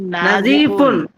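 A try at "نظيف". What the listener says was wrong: এই নাতে টান নাই, টান নাই।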